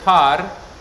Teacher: this word par is really par so this vowel is long o